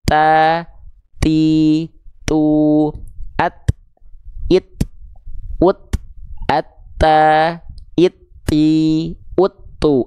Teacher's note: hams itu artinya mengalir nafas tapi terkhusus untuk huruf ta dan huruf Kaf keluar nafasnya itu hanya berupa percikan nafas saja ya Oke jadi ketika kita lafalkan harus ada percikannya ta ti